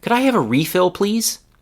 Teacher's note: use refill as a noun with the stress on the first part of the word